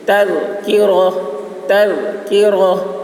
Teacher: ذال کی آواز باریک، کاف باریک، رو پر ہوگی